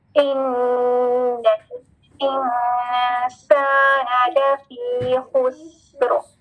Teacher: حمزہ کی کسرہ ای والی ساؤنڈ ہے، اے نہیں ہے، ای · نون مشدد غنہ کے ساتھ. غنہ کا کیا مطلب ہے؟ آواز ناک سے آئے گی. درمیان میں حمزۃ الوصل، یہ نہیں پڑھا جائے گا.